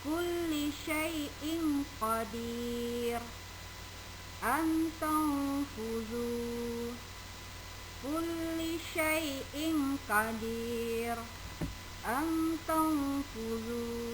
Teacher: Hukum bacaan nun sukun atau tanwin yang kedua adalah ikhfa, yaitu apabila nun sukun atau tanwin berhadapan dengan salah satu huruf ikhfa yang bisa kalian lihat di slide video pembelajaran kita. Maka nun sukun atau tanwin dibaca samar.